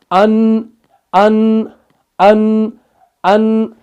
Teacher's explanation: नून निकलता है नाक से, अन, अन, अन, अन।